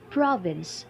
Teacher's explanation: pro has the high pitch going down to Vince